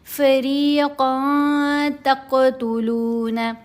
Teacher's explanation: فریقاً میں جو نون کی آواز ہے اس کو ناک میں چھپائیں گے تو آواز بن جائے گی فریقاً تقتلون، قاف کے اوپر کلکلا کیا جائے گا، تقتلون وتأسرون فریقا، را کے نیچے زیر ہے، را کو باریک پڑھنا ہے، ساتھ یا ساکن ہے، یا مدہ ہے، را کی آواز کو 2 حرکات کی مقدار لمبا کرنا ہے۔